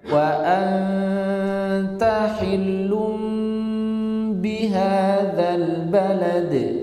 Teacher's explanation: idgham bi gunnah masuk ke rongga hidung